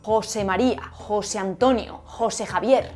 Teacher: José es una palabra átona, porque se apoya en el segundo nombre y la sílaba más fuerte pasa a ser la primera.